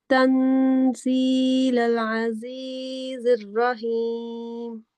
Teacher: را کو تھوڑا سا پر پڑیں گے، تفخیم کریں گے، باقی اس کو کھینچیں گے نہیں